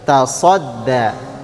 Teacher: Berarti huruf shad bibirnya tidak maju. Ya. Jadi jangan dimajukan bibirnya.